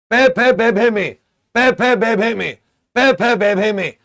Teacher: देखो होठ मिल रहे हैं तो याद रखिएगा ये ओष्ठय हो जाते हैं।